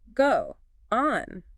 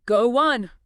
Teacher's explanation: I can feel the stop in my throat. So your mouth naturally inserts a little W sound to bridge them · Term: glides